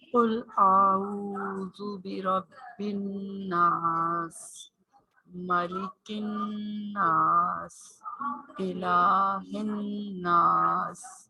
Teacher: اب اس میں جو یہ ناس لکھا ہوا ہے نا، اس میں آپ نے غنہ کرنا ہے۔ غنہ کا مطلب یہ کہ آپ نے ناک میں سے اس کی پوری آواز نکالنی، اور نون پہ تشدید ہے نا، تو اس لیے نون کو 2 دفعہ پڑھا جائے گا